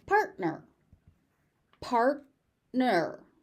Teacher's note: So that T is not aspirated, it's just partner.